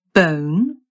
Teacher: There was O as in bone, which began with a schwa